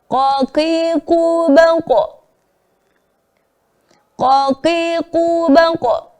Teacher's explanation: Harusnya tanpa hamzah sukun karena teori ilmu tajwid qalqalah itu hanya memantulkan huruf saja tanpa memberikan akhiran hamzah sukun